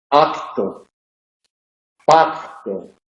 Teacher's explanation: La K en posición implosiva solamente aparece en préstamos. Y en esos casos suele sonorizarse. Ahí la relajación hace que se sonorice. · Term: sonorización